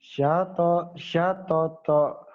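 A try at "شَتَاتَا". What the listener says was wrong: Panjang ujungnya, ada alifnya. Syatata, kemudian.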